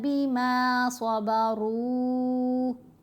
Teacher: را کے اوپر پیش ہے، را کو بھی موٹا پڑھا گیا